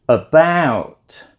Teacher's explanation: the second syllable is the stress syllable therefore it's said with a higher tone a longer vowel sound and a little bit louder or clearer than the other syllable